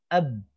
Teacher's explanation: bibirnya rapat atau bibirnya langsung dibuka suara Ba Itu tertahan suaranya enggak ngalir AB ini ditutup dibuka juga sama AB enggak ada suaranya tertahan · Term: huruf ba